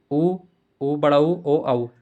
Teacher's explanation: होठों को गोल करके ये सब अक्सर बोले जाते हैं। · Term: व्रतमुखी